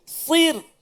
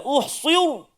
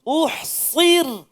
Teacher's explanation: Nak tebalkan sad, nak tipiskan ra.